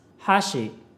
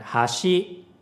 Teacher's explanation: If you don't know, pitch accent makes these words different. Hashi, chopsticks, has a high-low pitch pattern, and hashi, bridge, has a low-high pitch pattern.